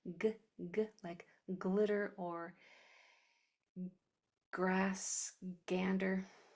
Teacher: G will make its hard sound almost always where that back of the tongue kicks off against the back of the throat.